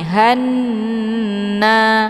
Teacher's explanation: Jadi ditahan ini hanna. Jadi ha ini tidak panjang ya, langsung berbentuk dengung. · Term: ghunah musyaddadah